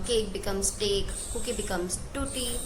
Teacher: the sound that is produced on the back of the mouth like K and G sound is replaced by the sound that is produced in the front. Like K, G will be replaced by T and D as I mentioned. · Fronting में क्या होता है that the sound that is produced on the back of the mouth like K and G sound is replaced by the sound that is produced in the front. Like K, G will be replaced by T and D